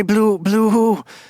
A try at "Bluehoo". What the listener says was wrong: Wow, you really got the intonation on that one wrong.